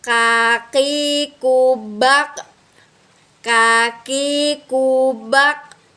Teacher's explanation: Nah, huruf K ini melafalkannya dengan lisan yang menyentuh langit-langit bagian belakang dan diiringi dengan udara